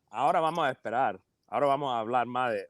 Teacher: That's that coastal aspirated S or whatever.